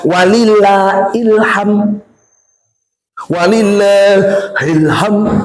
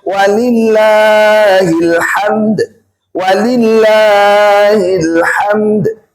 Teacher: Kita sudah tahsin, sudah mulai belajar nih. Ujungnya setelah mim ada huruf dal disukunkan, maka tetap diberikan haknya hilhamd. D-nya tetap ada qalqalahnya.